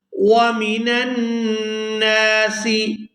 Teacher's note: یہاں نون مشدد ہے، اس پر غنہ کریں گے اور نون کو الف مدہ کی وجہ سے کھینچ کر بھی ادا کریں گے۔ غنہ کے بعد نون جب دوبارہ اپنی زبر کے ساتھ پڑھا جائے گا تو اس کو کھینچ کر ادا کیا جائے گا۔